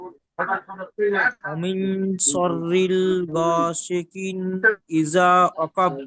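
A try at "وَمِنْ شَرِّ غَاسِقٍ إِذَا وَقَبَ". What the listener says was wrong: আর রিল নয়, শাররি, শুধু শাররি। ওয়ামিন শাররি গাসিকিন।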